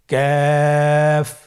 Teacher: কাফ উচ্চারণের ক্ষেত্রে অবশ্যই পাতলা করে উচ্চারণ করতে হবে এবং তিন আলিফ টেনে পড়তে হবে।